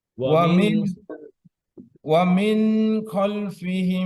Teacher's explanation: ওয়ামিন যেন ছুটে না যায়, এক জবর পরিমাণ ধরবেন, এক হারাকা জি পরিমাণ সময়।